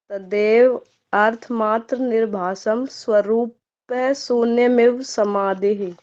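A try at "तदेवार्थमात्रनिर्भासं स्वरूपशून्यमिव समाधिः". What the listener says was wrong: यदि आप संस्कृत में ही पढ़ रहे हो ना, तो अर्थ मत लाओ बीच में, और यदि आप संधि विच्छेद करके पढ़ रहे हो विग्रह करके, तो क्या पढ़ना है? तदेव अर्थ मात्र निर्भासम स्वरूप शून्यम इव समाधि।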